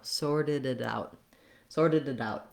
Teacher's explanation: I'm going to be linking all of those and having many flaps in a row. So 1, 2, 3 flaps in a row.